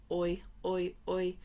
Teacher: The Y sound at the end of boy, oi, oi, this is a voiced sound.